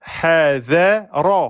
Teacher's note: J'ai pas dit hazare. Hazare, c'est faux. Le ra est emphatique.